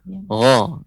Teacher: huruf gha itu pengucapannya seperti tertahan karena dia di pangkal ya tenggorokan paling atas